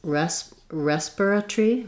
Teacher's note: Respiratory, keeping the e but losing the or that we have in American English, both of our pronunciations. They also do have a pronunciation that's stressed on the res, which is respiratory, but it still keeps that tree at the end, one syllable rather than tori that we say in English.